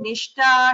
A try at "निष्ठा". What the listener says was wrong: Only in one place you missed the Mahaprana Nishtha.